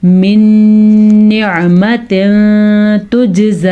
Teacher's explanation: یہ ادغام غنے کے ساتھ ہے کیونکہ یمون میں سے نون ہے